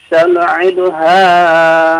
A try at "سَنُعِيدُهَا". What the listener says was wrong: Bapak bacanya sanu'iduha, itu 2 harokat panjangnya ya. Jangan dipendekkan ya.